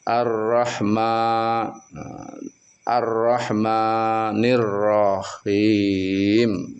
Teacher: ada mad thobi'i. Jadi dibaca dua harakat